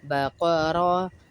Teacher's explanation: را زبر را پر پڑھ رہے موٹا پڑھ رہے